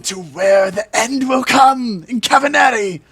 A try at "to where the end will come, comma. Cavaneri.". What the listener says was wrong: It sounded like you were saying to where the end will come in Cavaneri, not to where the end will come, comma. Cavaneri.